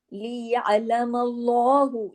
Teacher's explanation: उससे पहले जबर है अल्लाह के नाम से पहले, तो यअलमल्लाहु इधर लाम को हैवी करना है